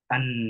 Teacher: Kalau di en itu ada di nasal, yaitu yang dikeluarkan en melalui saluran hidung.